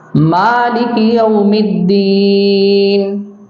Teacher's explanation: اس میں جو خاص جہاں پر ہمیں دھیان رکھنا ہے وہ یہ ہے کہ الحمد یہاں پر ہا کو حلق سے نکالیں، اور رب العالمین عین کو حلق سے نکالیں، الرحمن الرحیم اس کو بیچ حلق سے نکالنے کی کوشش کریں، مالک یوم الدین یہاں پہ ماں کے الف کو کھینچیں اور جو دین کی یا ہے اس کو کھینچ کے پڑھنا ہے